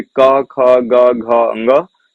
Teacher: का वर्ग का उच्चारण स्थान कंठ है।